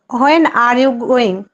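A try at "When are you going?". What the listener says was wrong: উচ্চারণটা কি হোয়েন না ওয়েন, আর এইচ এর উচ্চারণ সাইলেন্ট থাকবে, বলেন ওয়েন আর ইউ।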